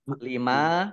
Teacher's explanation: mim fathah Alif Mad thi'i panjang dua harakat